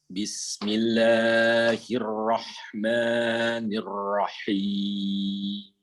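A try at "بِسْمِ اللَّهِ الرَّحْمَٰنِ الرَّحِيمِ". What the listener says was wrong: Jangan terburu-buru dalam penyebutan tasydid ya. Bismillah. Nikmatin saja dia. Bismillah.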